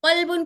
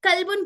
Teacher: قوف ہماری چھوٹی زبان اور اس کے اوپر کے پیلٹ کے نرم حصے سے ادا ہوتا ہے